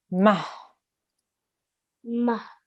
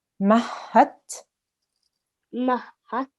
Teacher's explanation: the ha, remember, is a letter of the throat, and it comes from the bottom of your throat. So it's the ha which comes right from the bottom of the throat.